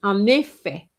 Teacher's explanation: The T silent. And here you have a liaison between the N and the E.